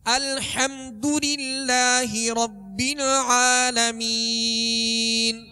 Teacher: الحمد آگے دال ہے، دال پر پیش ہے تو پیش کو ادا کرتے ہوئے دونوں ہونٹوں کو کامل گول کریں گے، مجھول نہیں پڑھیں گے، معروف پڑھیں گے. الحمدو نہیں، الحمدو.